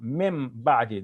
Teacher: That when the noon of tanween or any noon, it's not noon of tanween this time, it's the noon, the regular noon, min ba'di, it's followed by a ba. So we assimilate the noon sound into the ba.